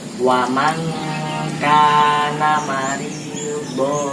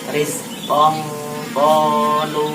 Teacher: jika ada nun sukun bertemu dengan kaf dan qaf, itu posisi bunyinya biasanya berubah menjadi ng atau eng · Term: ikhfa